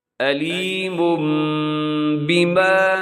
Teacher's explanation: آگے جو علیم یہاں آپ نے غنہ کرنا ہے، آواز کو اپنے ناک میں لے جانا ہے